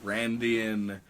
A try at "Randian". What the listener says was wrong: That is a weird way to say that. it just sounds like you're saying Randy. It just sounds like not what you're trying to say.